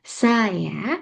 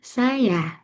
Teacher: kini lebih sering diucapkan dengan tekanan pada suku kata kedua